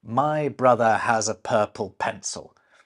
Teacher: Now that sound's known as a schwa, and it's basically our default vowel sound.